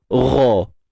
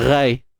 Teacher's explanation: Pada ghain tu kita kekalah dengan sifat asli dia, tebal. Gha. Jangan kita baca dengan ghai.